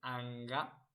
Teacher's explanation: And then we have the velar nasal, which is in the back. It's the one of anga.